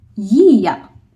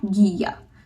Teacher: Now we will pronounce it as Ya not Gya. So when G is coming with soft vowel it becomes Y. It gives sound of Y instead of G.